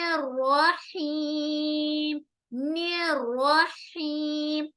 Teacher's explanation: رحیم کا را بھی ہم موٹا کریں گے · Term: را کو موٹا